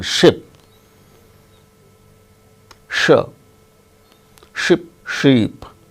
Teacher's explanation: sure is voiceless as in ship